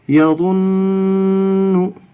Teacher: ایک قاعدہ تو یہ ہوگا اس میں تشدید کا، دوسرا قاعدہ ہوگا کہ نون کے اوپر تشدید ہے اس لیے نون مشددہ میں 1 الف کے برابر غنہ ہوگا